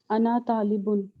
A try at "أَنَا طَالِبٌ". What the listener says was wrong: we actually read it as ana talibun, right? That's how we will. It don't uh, prolong it that much. So I say ana talibun, okay?